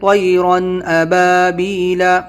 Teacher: تنوین کے بعد حمزہ ہے، اس کو ہم ظاہر کریں گے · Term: اظہار